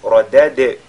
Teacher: La lettre ra, il y avait la tafkhim. Radad, le dal avec al-qalqala.